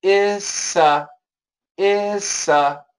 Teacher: So even the S is gone there, and the T, the S kills the T. We can cancel the T, and we get issa, issa. Here, issa, there's the S is basically longer, okay?